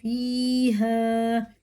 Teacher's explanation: یا ساکن سے پہلے زیر ہے، کھڑے زیر کی طرح کھینچ کے پڑھیں گے